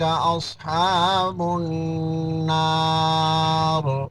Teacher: اصحاب النار نون مشدد غنہ ہوگا